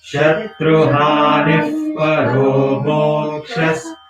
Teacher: in the middle of a line, Visarga is not pronounced in the full way. It's not pronounced as aha or ihi. Because you are adding up the next letter.